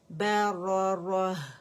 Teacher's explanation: مطہرۃ بِأَيْدِي سَفَرَةٍ کِرَامٍ بَرَرَةٍ، ٹھیک ہے. یہ را ہیوی ہوگا، ہا جو ہوگا وہ سافٹ ہوگا کیونکہ تہ مربوطہ کی آواز کو ہا سکون کی آواز میں ہم بدل دیں گے